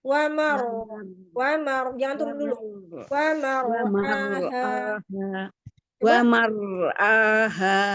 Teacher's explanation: Ada roh tafkim. Rohnya, roh sukunnya tafkim.